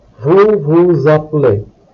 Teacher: Here we link the last letter of the S of the second vous and the first letter of the verb form appeler with a Z sound. What happens here is that the last consonant is linked with the first vowel. · So you will notice here that the last letter of the word vous, S, it's pronounced as Z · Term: linking sound, linking sounds